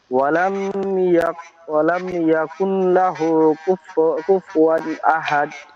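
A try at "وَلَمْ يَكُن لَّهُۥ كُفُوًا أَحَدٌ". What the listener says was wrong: ওয়ালাম, ওয়ালাম ইয়াকুন, এখানে কুন হবে না কিন্তু, এই নুন বললে কিন্তু ভুল হয়ে যাবে। ওয়ালাম ইয়াকুল্লাহু, কাপ সরাসরি লামকে ধরবে, নুনটা বাদ যাবে। তাসদিদ এবং হরকতের মাঝে যদি সাকিনওয়ালা কোনো অক্ষর থাকে, তখন সেটা উচ্চারিত হবে না, ঠিক আছে। ওয়ালাম ইয়াকুল্লাহু, এখানে আরো একটা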